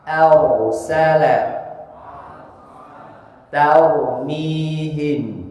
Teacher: barusan terdengar a-nya pun ikut tebal jadi jangan ikut tebal a-nya tapi tetap a